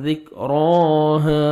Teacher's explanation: اور را کو من کھڑے زبر ہے، را کو آپ نے 1 سیکنڈ کھینچنا بھی ہے اور زبر ہے تو موٹا بھی کرنا ہے. ذک راہ، الف مدہ 1 سیکنڈ ہا کو کھینچیں گے.